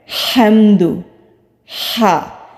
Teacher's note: یہ ہا حروف ہلکی ہے، حلق سے ادا ہوتا ہے